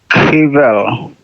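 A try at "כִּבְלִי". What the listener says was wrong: And again, assume if you have a shva in the middle of a word that it's a pause, not a pronounced. So this would be kivli.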